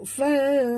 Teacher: Fa, nun mati bertemu ta, kita sorokkan bunyi nun ke dalam ta. Bunyi nun ini samar-samar